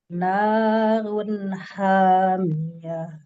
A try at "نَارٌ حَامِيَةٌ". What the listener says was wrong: Hati-hati nanya kepanjangan. Emang di sini enak ya dipanjangin tapi 2 harakat aja. Naun hamiyah. Nah, kalau dipanjangin narun hamiyah. Nah, itu kepanjangan.